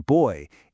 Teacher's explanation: But then you have diff thongs where your tongue actually moves during the vowel, gliding from one position to another.